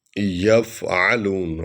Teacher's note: عَلَى ما يفعلون، ما میم حرف شفوی ہے، یفعلون عین جو ہے حرف ہلکی ہے، حلق سے نکلتا ہے